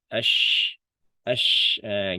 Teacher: Ash, ash, ash. Tengah lidahnya dia, Mak. Tengah lidahnya ngangkatin. Ash, ash, gitu. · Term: shin